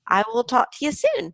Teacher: notice how all the words in the phrase are linked together with no pause